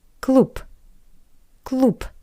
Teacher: The word cloop which means club. The voiced consonant B changed to P.